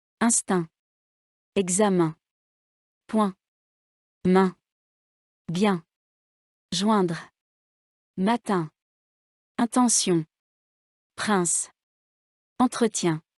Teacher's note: La voyelle 1, comme dans instant. Voyelle nasale. L'air sort par la bouche et par le nez. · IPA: [ɛ̃]